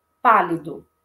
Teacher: Pálido. Então, a intensidade maior está na sílaba pá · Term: sílaba tônica